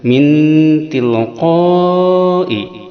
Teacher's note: Ikhfa akrob ini maksudnya samarnya dekat, mendekati n, bunyinya mendekati n.